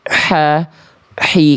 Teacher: H kecil itu tepat dari bagian tengah tenggorokan. Karakter nafas yang keluar itu bisikannya lembut.